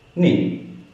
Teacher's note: And fourth tone, abruptly from up to down.